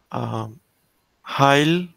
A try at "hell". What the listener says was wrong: on, hell, not heil. Where do you see I in here?